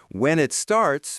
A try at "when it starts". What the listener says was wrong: Close. Connect it more. When it starts.